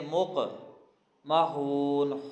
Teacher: مق قاف حروف قلقلہ میں سے ہے، قلقلہ کر کے پڑھیں گے، مق محون، خون کے بعد واو مدہ ہے، یہاں پہ کھینچ کے پڑھیں گے، ساتھ ہی آیت ختم ہو رہی ہے، نون ساکن ہو جائے گا۔